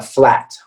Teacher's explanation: it's a front sound but it's a more open sound okay this is not the spanish uh ah sound